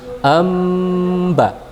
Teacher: masukkan bunyi nun ke dalam huruf ba seakan-akan ada mim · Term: iqlab